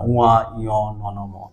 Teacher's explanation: এগুলো কিন্তু নাকের সাহায্যে উচ্চারিত হয়, নাক বন্ধ করে দিলে দেখো এগুলো উচ্চারণ করতে পারবে না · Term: নেজাল সাউন্ড